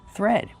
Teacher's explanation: We have the th making the voiceless sound.